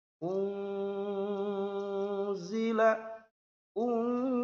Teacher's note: Nah, unzila bagaimana cara membacanya? Yaitu pertama didengungkan.